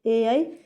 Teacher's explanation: कंठ से भी आवाज़ आएगी और तालव्य में भी हमारी टंग टच करेगी इनको बोलने में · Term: कंठ तालव्य